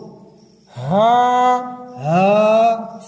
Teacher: ہا سینے میں سے ادا ہوگی